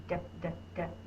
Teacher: my tongue is tapping on the top of my mouth